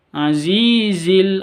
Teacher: Azi panjang 2 ketuk karena ada ya sukun diawali dengan kasroh.